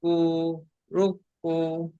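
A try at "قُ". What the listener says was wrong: ফের আপনার আপনি কাফ করছেন, এটা তো কফ, কফ পেশ কু,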